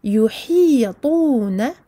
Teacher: Attention à amincir le ha suivi d'un ta emphatique.